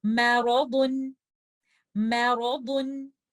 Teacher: In this example, letter meme is light, but for letter ra, when it has a fatha, we recite letter ra with tafkhim. And letter dad, we have to make sure that we are giving it isti'ala and ittabaq. So we have to make it heavy. Back of the tongue is up.